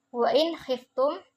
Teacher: nun sukun bertemu dengan huruf kha dia izhar halki